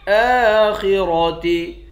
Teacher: خا اور را دونوں کو موٹا پڑھیں گے۔